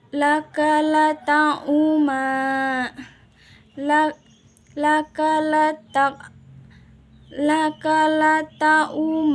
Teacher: mengkombinasikan kan harakat fathah dengan harakat dammah disertai dengan monyong bibir kedepan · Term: Isman